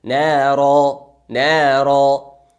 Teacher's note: الف عوز میشه بدل میشه او را مد عوز گفته میشه مثل مد اصلی دو حرکت مد میشه نرا نرا پس در اینجا در حالت وقف دو حرکت مد · اگر بالای دو تا زبر وقف کنیم دو تا زبر ما به الف عوز میشه